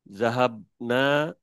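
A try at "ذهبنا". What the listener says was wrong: টান হবে না, হ্যাঁ। জাহাব না।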